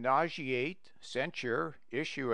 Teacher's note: the S must be pronounced as sh